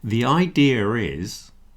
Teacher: So with a word like idea, it's got that uh on the end and we'll quite often squeeze in a little R. If I say the idea is, you hear that I'm putting a little R in between. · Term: intrusive, intrusives